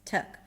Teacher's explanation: The 'uh' is a schwa, so basically you don't pronounce the 'tik' there, it's 'tuhk'.